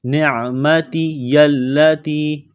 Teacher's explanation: اذکروا نعمتی التی، نون کو عین کے ساتھ پلس کرنا ہے، عین گلے کے درمیان سے زور لگا کر عین کو نکالیں گے